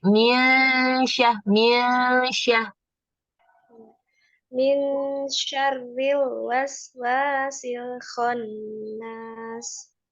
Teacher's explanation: posisi setelah nun itu tuh lidahnya mau ke ngomong shin gitu